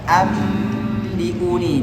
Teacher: mengucapkan nun sukun tanwin seperti mim mati yang diikhfakkan serta dengan dengung · Ketika diiklab nunnya dirubah menjadi mim, bacanya ambiuni, didengungkan karena tadi disebutkan dengan digunnatin.